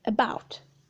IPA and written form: ə'bɑʊt (about)